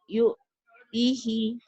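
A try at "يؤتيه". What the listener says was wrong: Yu'tihi. Panjang atuh Ibu. Hi-nya pendek. Yu'tihi. Ti-nya panjang. Yu'tihi. Tapi jangan putus. Yu'tihi. Nanti kalau baca Quran itu di ujung dihentikan. Yu'tih gitu ya Bu ya.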